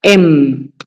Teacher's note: La M es labial como la B. Es con los labios.